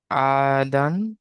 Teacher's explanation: আদান, আলিফের ডান দিকে যাওয়ার এসে একে আলিফ মাদ্দা বলে, আলিফ মাদ্দাকে এক আলিফ পরিমাণ টান দিয়ে পড়তে হবে।